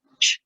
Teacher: Their production is a combination of both stops and fricative. There's an attempt to stop the sound, and then it comes out suddenly. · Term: affricates